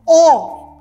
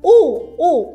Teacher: Questa è la O chiusa, O, molto più stretto, O.